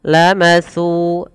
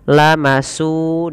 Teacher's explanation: hati-hati di dalam melafalkan huruf sa, tidak boleh kita menggantinya, mengganti jadi huruf sin. Terdengar bunyinya lamasu dengan s, padahal di sini bukan s yaitu sa.